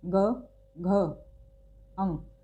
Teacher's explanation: इनको अगर आप उच्चारण करके देखें, ग, यहाँ पर अगर आप हाथ लगाएंगे ग, घ, अंग, तो आपको थोड़ा सा कंपन, थोड़ा घर्षण महसूस हो रहा होगा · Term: सघोष